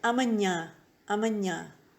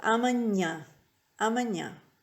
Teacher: It's a ñ sound, ñ. And it's slightly nasal too.